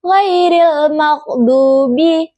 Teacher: huruf gain makhrajnya itu di tenggorokan tengah. Maksudnya itu getaran lebih kuat dari ain. · Huruf do yang makhrajnya itu di tengah lidah dan langit-langit mulut. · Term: huruf ghain